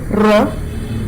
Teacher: pronunciation it is and when you say raw try it out you can feel the tongue tapping against the roof of the mouth intermittently at intervals right and that is called intermittent closure not open across you